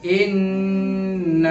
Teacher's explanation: غنہ بھی کریں گے ایک الف کے مقدار اور کھینچیں گے بھی ایک الف کے مقدار